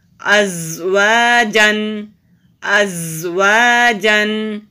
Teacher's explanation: حمزہ زبر زا از، واو زبر وا، جیم دو زبر جن، ازواجن ازواجن۔ زا بزنگ ساؤنڈ کے ساتھ مضبوطی سے پڑھتے ہیں، زال اور زا دونوں کی آواز فرق ہوتی ہے، یہ خیال رکھتے ہوئے ہمیں پڑھنا ہے کہ یہ زا ہے، اور الف سے پہلے زبر ہے، حروف مدہ ہے، ایک الف کے برابر لمبا کرنا ہے۔